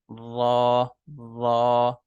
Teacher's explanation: रा को आपने पूर पढ़ना होता है तो पूर पढ़ने की वजह से आपको अपनी जबान की जड़ को भी थोड़ा सा ऊपर की तरफ उठाना होगा जिसकी वजह से रा जो है थोड़ा पर्थ यानी मोटा मोटा